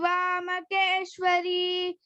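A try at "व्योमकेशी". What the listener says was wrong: It is Vyomakeshi. It is not Kesi. Okay? Vyomakeshi and then Manjadhi. You have to stress on that.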